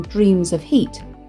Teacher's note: the assonance of the repeated long vowel sounds in Dreams of Heat